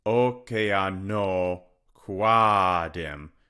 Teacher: So Q-U-E-E-A, the E here is going to elide. And this whole thing, qua, is going to become one syllable. One long syllable. To finish out the spondy on the second foot there. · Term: elision